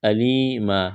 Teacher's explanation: یا ساکن سے پہلے زیر ہے، یا مدہ ہے، الف کے برابر کھینچنا ہے ، وقف کریں گے، دو زبر کی تنوین کو الف سے